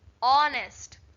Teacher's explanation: When you say honest, we are not getting H pronunciation. We are getting O.